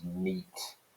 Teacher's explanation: So out becomes oot, and night, which is again a diphthong sound in RP, becomes neat in Geordie. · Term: single long vowel